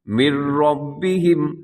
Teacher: یہاں نون بالکل ختم ہو جائے گا، یعنی میم کو آپ ڈائریکٹ را کے ساتھ ملائیں گے، اس کو کہتے ہیں ادغام۔